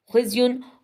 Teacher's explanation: अब ये गौर से समझे, इल्ला अलिफ से पहले ज़बर है तो अलिफ मद्दा है, थोड़ा सा लंबा करेंगे। खुज़युन, खौ जो है उसको हमने मोटा पढ़ना है क्योंकि ये हरुफ़ मुस्तानिया में से है। उसके बाद जब ज़ा हमने अदा करना है उसमें सीटी की आवाज़ भी आनी चाहिए, और ये भी हमने ख्याल करना है कि इसको हमने बारीक पढ़ना है, होंठों को फैला देना है। · जब ज़ा हमने अदा करना है उसमें सीटी की आवाज़ भी आनी चाहिए, और ये भी हमने ख्याल करना है कि इसको हमने बारीक पढ़ना है, होंठों को फैला देना है। खौ बोलने के बाद हमने होंठों को फैला देना है।